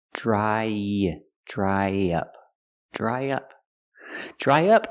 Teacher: To link the vowel I dry to the short uh in up, we need a sound in the middle y.